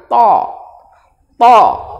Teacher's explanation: Tulisannya THA, dibaca to. Jadi ujung lidah bertemu dengan ujung gigi, kemudian seperti dipantulkan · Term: huruf to